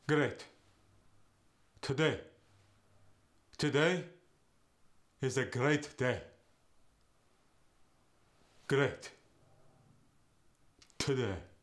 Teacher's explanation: The A sound goes to an eh sound.